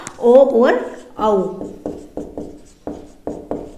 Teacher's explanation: कंठोष्ठ से कंठ और ओष्ठ को मिलाकर उच्चारित हुए